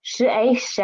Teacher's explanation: The initial is sh. The final is a and the tone is second tone.